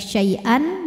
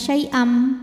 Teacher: tanwin dileburkan ke mim. Jadi tidak lagi syai'an melainkan syai'am, bunyi M dan tahan dengungkan.